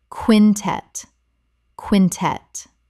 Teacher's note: Two syllables with the stress on the second.